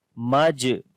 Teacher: جیم کے اوپر جزم آ گئی ہے جو کہ حروف قلقلہ میں سے ہے، جو یہاں پر قلقلہ کریں گے، کمزور قلقلہ ہوتا ہے۔